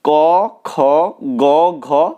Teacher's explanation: ক বর্গের বর্ণগুলো উচ্চারিত হচ্ছে সরাসরি কণ্ঠ থেকে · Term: কণ্ঠধ্বনি